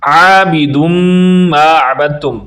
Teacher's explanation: دم پر غنہ کریں گے، میم پر شد ہونے کی وجہ سے، جب بھی میم پر شد ہو یا نون پر شد ہو، یہ 3 دندان والی شکل کو شد کہتے ہیں، تو اس پر غنہ کرتے ہیں، یعنی آواز کو ناک میں لے جا کر پڑھتے ہیں۔